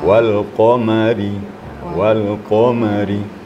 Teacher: Qaf itu tebal sampai pengaruh kepada huruf ro. Sedangkan ra hurufnya tarkik karena baris kasrah. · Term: tarqiq